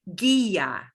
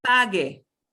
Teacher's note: The job of the U is to stand there and give the G the hard G sound. Okay, but the U itself goes silent.